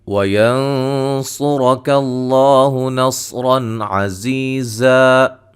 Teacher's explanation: وَيَنصُرَكَ اللَّهُ نَصْرًا عَزِيزًا، نون ساکن کا موٹا اخفا ہے، صاد کو را کو موٹا ادا کریں گے، لفظ اللہ کو موٹا ادا کریں گے، مد اصلی ہے، صاد کو را کو موٹا ادا کریں گے، زا کو سیٹی سے ادا کریں گے، اور یہ یا مدہ ہے۔